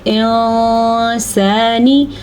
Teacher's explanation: کسی حد تک ہمیں نون کی شکل برقرار رکھنی ہے، یہ نہیں کہ ہم نون کو بالکل ہی ختم کر دیں گے، لیکن نون کی آواز کو کسی حد تک ہم نے چھپانا ہے، تو ہم اس کو کیا پڑھیں گے انسانی۔ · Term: اخفا